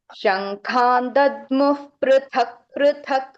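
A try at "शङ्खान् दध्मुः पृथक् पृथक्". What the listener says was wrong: Here also you are missing Mahaprana. Dadmuf. When two same wordings with Mahapranas will come, no, there you are making some mistake. You just carefully, you just read it off.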